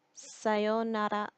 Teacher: you're not going to really pronounce the R. It's going to be pronounced more like an L sound.